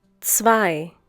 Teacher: The German consonant Z is pronounced like the English TS sound that is found at the end of words such as mats, pots, bits.